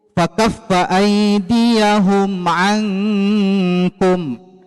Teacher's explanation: Hukumnya dibaca dengan tidak dengung, maksudnya jelas, dibaca jelas. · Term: izhar syafawi